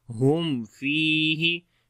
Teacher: we make izhar shafawi here, the clear sound of meme